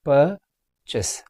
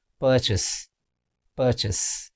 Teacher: Purchase. The stress is on the first syllable. Purchase. Purchase.